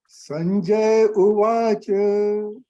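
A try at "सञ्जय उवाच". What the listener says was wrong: Okay, not to say Sanjay. Ya is not Halan. Sanjaya. Ya should come full. Sanjaya Uvacha.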